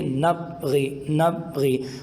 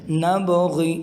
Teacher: قلقلہ نہیں کریں گے تو آواز پا کی آئے گی